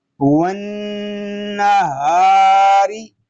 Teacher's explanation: نون ساکن میں غنہ نون مشدد میں غنہ، الف مدہ، را باریک